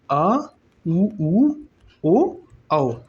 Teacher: पश्च स्वर होता है आ उ ओ औ